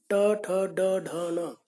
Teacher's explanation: जीभ की नोक ऊपर तालु से नोक टकराती है और झटके के साथ नीचे गिरती है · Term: मूर्धन्य